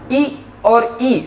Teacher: ई और ई जब बोलते हैं तो हमारी जिह्वा तालु से जाकर के टकराती है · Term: तालव्य ध्वनि